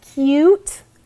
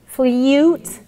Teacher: So you end up dropping that ya sound.